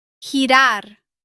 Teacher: Before E or I, the G has a stronger sound from the throat, similar to the Spanish J.